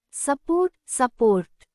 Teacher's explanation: The first syllable, su, is unstressed and sounds like a. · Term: schwa